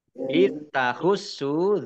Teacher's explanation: Itahussu zal sukun bukan kolkolah jangan dipantulkan. Sin tasdid ya sinnya dibaca double ada tasdidnya. Sin domah wawu sukun mat tobi'i panjang 2 harokat.